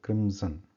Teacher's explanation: so in the English word Crimson we are writing M and it is pronounced M like Crimson because the m is there because the both the lips are touching each other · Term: m sound